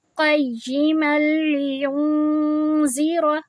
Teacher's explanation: ہم نے یہیں پر ہی آواز کو 2 حرکہ لمبی کرنی ہے اور نون کی آواز کو چھپانا ہے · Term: اخفا